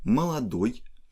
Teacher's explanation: Молодой has stress on ой